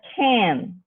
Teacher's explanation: the second sound is a nasal sound it influences the vowel that occurs before it and makes it nasalized so can becomes can and the vowel is still a vowel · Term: nasalization